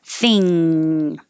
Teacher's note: you just hold your tongue up there and the airflow goes through your nose.